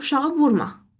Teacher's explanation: Vurğu düşür birinci hecaya.